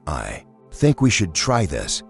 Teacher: your voice lifts at the end like a question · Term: rising intonation